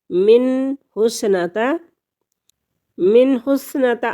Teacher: نون ساکن کے بعد ہا حروف حلقی میں سے آ گیا تو یہاں پر اظہار ہوگا، غنہ نہیں ہوگا